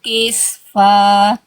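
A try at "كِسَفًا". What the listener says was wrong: Kisafa. Sinnya bukan sukun tapi harokatnya fathah ya.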